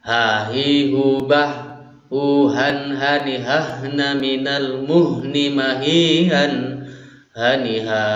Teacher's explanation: Sama halnya dengan huruf hamzah, letak keluarnya huruf ha ini juga berada di pangkal tenggorokan ya